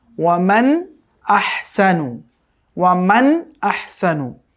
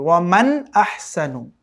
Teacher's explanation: এটাকে কিন্তু ওয়ামান আহসানু এরকম গুণনা করে পড়া যাবে না, একদম স্পষ্ট করে পড়তে হবে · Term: ইজহার